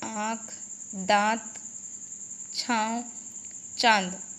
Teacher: इनका उच्चारण नाक और मुंह दोनों से होता है, जैसे आँख, दांत, छांव, चांद। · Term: अनुनासिक